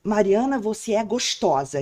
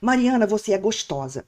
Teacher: o dialeto carioca né esse som sibilante desse S